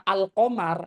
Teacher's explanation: orang Arab kalau menyebut kata alqamar maka lamnya pasti dibaca jelas